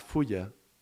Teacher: the air is passing through the sides of the tongue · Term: lateral approximant